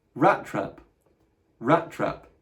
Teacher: You make that middle T longer by kind of pronouncing two together.